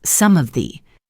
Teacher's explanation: Instead of saying three separate words some of the, she connects them and reduces the vowel sounds. It sounds more like some sath.